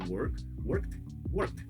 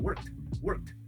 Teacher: Veja que eu não preciso nem ressaltar muito work, o K dele. Eu posso mais engolir e botar o T no final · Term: T mudo